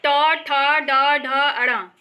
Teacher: ये सभी मूर्धा से बोला जाता है। ये सभी मूर्धा या मूर्धन्य कहलाता है।